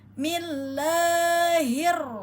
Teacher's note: bertemu dengan lafaz Allah maka dibaca tipis ya tarkik m Seperti biasa lafaz Allah tetap terbaca dua harakat. · ya pada ha domir pangkal tenggorokan